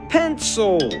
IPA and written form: ˈpen.səl (Pencil)